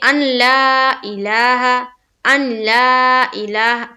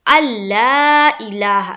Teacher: حمزہ کو لام سے ملائیں گے، نون کا کوئی بھی کام نہیں ہے، نون بالکل یہاں پر حذف ہو جائے گا. · یہاں پر جو نون ہے اسے حذف کر دینا ہے، اس کی بو بھی نہیں آنی چاہیے، بالکل اسے حذف کر دینا ہے، اس کا کوئی کام ہی نہیں ہے.